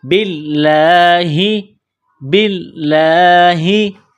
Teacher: والصابئین، من آمن باللہ، با کو لام کے ساتھ ملانا ہے، لام میں سختی کرنی ہے، یہاں کڑا زبر ہے، ایک الف کی لمٹ میں کھینچنا ہے، لفظ اللہ کے نام سے پہلے زیر ہے تو لفظ اللہ کے نام کو باریک کرنا ہے